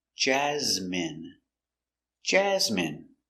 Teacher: Stress the first syllable.